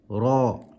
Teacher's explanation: Try not to roll and say ra. Try not to make that rolling motion with your tongue. It's just ra with a full mouth.